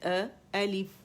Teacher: الف اقصى الحلق سے